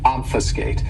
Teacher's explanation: this verb has three syllables and the stress is on that first syllable